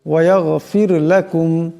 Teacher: এখানে রা সাকিন, তার ডাইনে জের আসছে, এ রাকে পাতলা আওয়াজে পড়তে হবে।